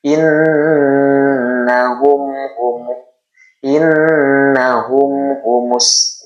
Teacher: Idhar syafawi, cara bacanya tidak boleh dibaca terlalu lama atau dibaca ditahan di sini di mimnya. Tapi sekedar lewat saja. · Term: izhar syafawi